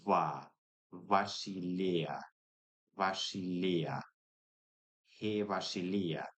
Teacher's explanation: I'm loosening it. Again, I'm loosening it to not a fricative v, but as an interlabial fricative